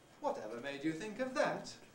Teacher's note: here we've got basically the rising head and the high fall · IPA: wɒt evə meɪd ju θɪŋk əv ðæt